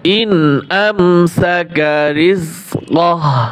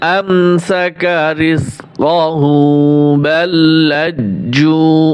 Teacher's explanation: এইখানে থামলে টান হবে না, আর মিলিয়ে পড়লে টান হবে